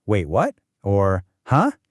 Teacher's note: This is the rising tone. Your voice starts somewhere in the middle and then goes up. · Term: second tone